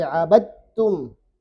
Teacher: Ini dalnya sudah tidak dibaca. Langsung ditasydid huruf setelahnya. Abadtum. Bukan lagi abad. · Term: idgham